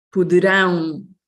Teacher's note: This is the strong syllable, the last one.